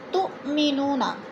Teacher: حمزہ ساکنہ ہے، جھٹکا دے کر پڑھیں گے